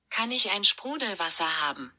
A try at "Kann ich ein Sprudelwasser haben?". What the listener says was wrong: What's that hum at the end? Sprudelwasser. Sprudelwasser.